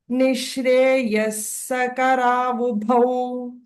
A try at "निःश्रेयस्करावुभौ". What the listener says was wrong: You need not stress, Bhagini. Nishreyasakaravubhau.